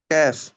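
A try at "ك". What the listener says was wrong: আর একটু ভেতর থেকে, আপনি জিহ্বার মাঝখান থেকে কেফ।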